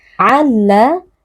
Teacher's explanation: meleburkan tanwin ke dalam huruf lam sehingga huruf lam terdengar seperti huruf yang bertasydid kemudian dibaca tanpa dengung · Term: idgham bila gunnah